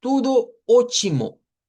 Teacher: cuando la T queda en medio de vocales, se hace como la cha, como la ch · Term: africado